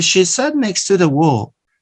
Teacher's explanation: The ta, the sound ta is elided into the ta of to, next to, next to.